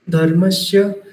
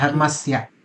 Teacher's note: धर्मस्य दांतों से आना चाहिए, सा का साउंड जो है ना वो दांतों से आता है